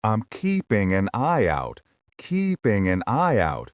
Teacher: Notice how an and I and out all flow together. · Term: linking